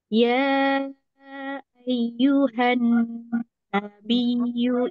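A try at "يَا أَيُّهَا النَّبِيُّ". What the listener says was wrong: Ya, jangan jadi ai, tapi jadi ya ai. Ya ai. Jadi tadi kurang a, a.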